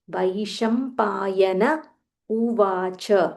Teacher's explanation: this is vai, it's not ve, it's vai